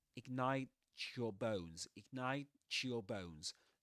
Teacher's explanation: ignite, ends in this sound, t, and the next word begins with ya. So you get ch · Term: coalescence assimilation